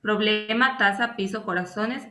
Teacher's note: el acento de intensidad o sílaba tónica se ubica en la penúltima sílaba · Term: palabras graves o llanas